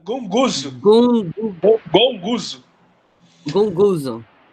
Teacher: Quando tem 2 gama, o primeiro ele tem som de N.